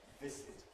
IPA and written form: ˈvɪsɪt (visit)